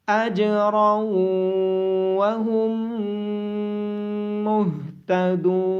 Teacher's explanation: दाल के बाद वाव मद्दा होने की वजह से दाल को लंबा करके पढ़ा जाएगा। · तनवीन मतलब दो ज़बर के बाद हरूफ यरमलून में से वाव होने की वजह से इदगाम होगा। मीम मुशद्दद होने की वजह से मीम पे गुन्ना होगा और हा को गले के नीचे वाले हिस्से से अदा किया जाएगा।